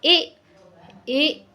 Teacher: कंठ और तालु दोनों का यहां पे इस्तेमाल होगा बोलने में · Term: कंठ तालव्य